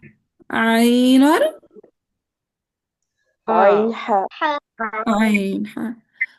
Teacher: वसतुल हल्क से अदा होते हैं ऐन और हा